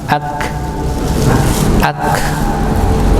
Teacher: pangkal lidah bertemu dengan langit bagian keras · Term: huruf kaf